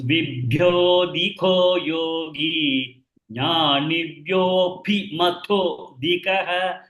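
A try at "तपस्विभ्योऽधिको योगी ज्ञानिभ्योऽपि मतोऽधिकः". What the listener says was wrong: The tha is first tha. Pa also should be the pa. Tapas will be, not tabas. It is tapas.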